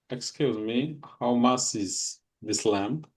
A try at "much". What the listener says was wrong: How much? Not must. Much. CH sounds ch. It's really important to pronounce, okay, the letters correctly, the sounds.